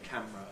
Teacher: I have a categorical compression in camera. I have to say camera as two syllables.